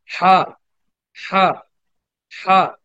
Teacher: লম্বা না, হালকা একালিফটা।